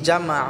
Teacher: গলায় চাপ দিয়ে এক আলিফ টেনে পড়বো